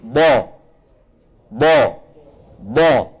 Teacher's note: ضاد متحركة أيضا هنا حاولنا أن نعبر بالأسهم عن أن الصوت يتجه يمنة ويسرة ولا يتجه إلى الأمام